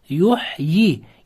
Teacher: Endi qarang, ye so'zi harfi so'zda kelib, o'zida hech qanday belgi bo'lmasdan, undan oldingisi kasralik bo'lsa mattabi'i bo'ladi. Shunda yuhyi deb ikki harakat cho'ziladi.